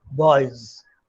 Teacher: phonetically it is a voiced z sound, boys. This script voice is voiceless in the spoken form become a voiced one because of the phonetic environment, because there's a vowel before that, E, so that makes that s into z like that.